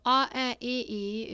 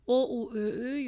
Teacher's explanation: Yeah, it's unrounded. Your lip shape is not rounded, and O, U, Ö, Ü, your lips are rounded